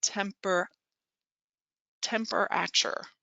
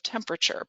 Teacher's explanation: out they might say temper temperature right instead of temperature because that middle syllable has a schwa in it